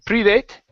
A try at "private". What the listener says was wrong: the ATE in some cases, okay, is not pronounced ate.